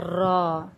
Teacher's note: ना ही दरमियान और ना ही बहुत पीछे बल्कि जुबान की नोक के बिल्कुल साथ ही जुबान की नोक की पुश्त जब ऊपर के चार दांतों के मसूड़ों से लगे तो क्या निकलता है?